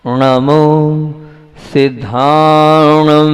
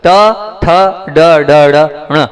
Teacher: नाक से तो निकला लेकिन जीभ को पीछे करके ना का उच्चारण किया है